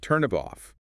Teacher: The final consonant of one word links directly onto the initial vowel of the next.